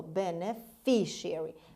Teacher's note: the stress is on the third syllable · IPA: /ˌbenəˈfɪʃiəri/